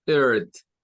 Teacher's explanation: O sea, no suena a no suena así, suena er. Ese sonido es más como una especie de schwa con R. Es como la schwa con el R, más o menos, se parece un poco.